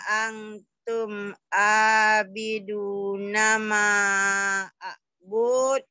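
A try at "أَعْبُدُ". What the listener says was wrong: Kok panjang? Pendek. A'bud. A'bud. A'bud. A'bud. A'bud. A'bud.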